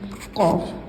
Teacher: कॉफ ज़ुबान की जड़ और तालू के नर्म हिस्से से अदा होती है